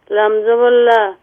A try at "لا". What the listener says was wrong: یہ لام زبر لا، یہ لمبا ہو رہا ہے، لام زبر لا،